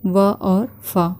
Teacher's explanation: इनके उच्चारण में हमारे दांत और ओंठ दोनों आपस में मिलकर इनका उच्चारण करते हैं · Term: दंत्योष्ठ वर्ण